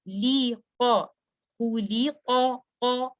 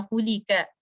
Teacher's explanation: تو اس کو پڑھتے وقت آپ نے دھیان رکھنا ہے کہ قاف جو ہے یہ ہیوی لیٹر ہے یہ ڈیپسٹ پارٹ آف دا ٹنگ سے آ رہا ہے. تو آپ نے اس کو ہیوی ساؤنڈ یعنی آسم ساؤنڈ کی ہیوی ساؤنڈ پر آپ نے اس کو بیان کرنا ہے.